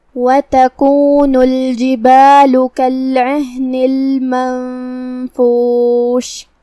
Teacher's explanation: آخر میں ہم شین پہ رکیں گے تو اس پہ جزم سے رکیں گے اور اسے ظاہر کریں گے